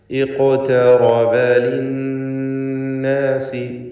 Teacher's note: നൂൻ മുശദ്ദദയെ മണിക്കണം. 2 ഹറക്കത്തിൻ്റെ അളവിൽ ഗുന്ന നൽകി മണിച്ചുകൊണ്ട് ഉച്ചരിക്കുക.